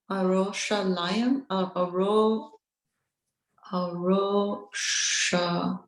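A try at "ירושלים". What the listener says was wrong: What's that first letter? It is a yud. If you pronounce Jerusalem correctly in the original language, you say Yerushalayim.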